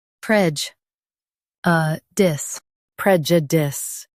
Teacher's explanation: Emphasize prej and soften uh dis.